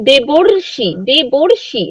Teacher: যদি রি কার থাকে, তাহলে সেটা মিলে একটা অর ধ্বনিতে রূপান্তরিত হয়